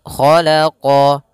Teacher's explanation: huruf ko pangkal lidah kita terangkat · qo juga huruf istila pangkal lidah yang terangkat